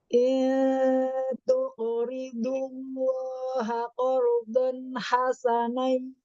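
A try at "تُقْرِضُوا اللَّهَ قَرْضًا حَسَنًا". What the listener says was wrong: Nah, ya di sini mau botnya ya terdengar lebih dhammahnya. Il tuqridullaha qardon hasanai. Nah, di sini ada idghamnya ya, idgham bi gunnahnya. Hasanai yudha'ifhu.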